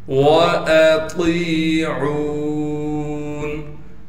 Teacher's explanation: ता को मोटा करके पढ़ना है इसलिए कि ता मोटे हरूफ में से है और ता को याय मद्दा से मिला देंगे और ता को एक अलिफ की मिकदार खींचेंगे।